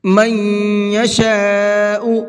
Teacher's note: من کے اندر غنہ کریں گے، اس لیے کہ نون ساکن کے بعد میں یا ہے۔